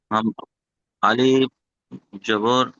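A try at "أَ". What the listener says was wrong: থাক, যে দেখেন আলিফ এই লম্বা ডানিকে আলিফ বলি আমরা, কিন্তু এই আলিফের মাথায় যখন জাবার কিংবা পেশ কিংবা জের এসে যাবে, তখন কিন্তু এটি আর আলিফ হবে না, এটি হামজা হয়ে যাবে।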